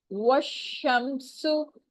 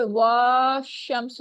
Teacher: جیسے یہاں پر آپ کو کچھ مثالیں دی گئی ہیں، وَالشَّمْسُ، یہ وا شمس نہیں پڑھا جائے گا، یا والشمس نہیں پڑھا جائے گا، نہ الف پڑھا جائے گا نہ لام پڑھا جائے گا. واؤ کی زبر کو شین کے ساتھ ہم ملا دیں گے، لمبا بھی نہیں کیا جائے گا